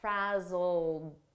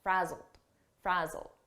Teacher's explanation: the pronunciation is a very soft D and you almost don't hear it